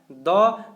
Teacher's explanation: द आप ही बोल करके देखेंगे तो आपको पता चल जाएगा। द जैसे ही बोलेंगे दंत में स्पर्श करता है